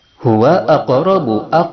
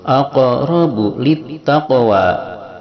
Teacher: ada qaf juga sukun di tengah kalimat disebut dengan qalqalah, memantul